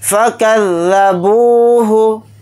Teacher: फ़ा को जल्दी पढ़ेंगे, काफ को ज़ाल के साथ मिलाकर पढ़ेंगे, ज़ाल को जल्दी पढ़ेंगे। बा के साथ वाव मद्दा है, बा वाव पेश बू को थोड़ा खींच कर पढ़ेंगे। हा को जल्दी पढ़ेंगे।